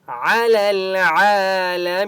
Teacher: لام کے اوپر سکون ہے، لام کو لام کے ساتھ ملائیں گے، یا اور الف کو نہیں پڑھیں گے۔ کھڑا زبر ہے، عین کو 1 الف کی مقدار کھینچ کر پڑھیں گے۔